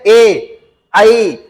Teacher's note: जैसे हम बोल ए आपने बोला तो जीभ का आगे वाला भाग नीचे का ई नीचे गया कि नहीं गया, ए आई। जब ए आई बोलेंगे तो जीभ का जो आगे वाला भाग है दोस्तों वही एक्टिव रहता है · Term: अग्रस्वर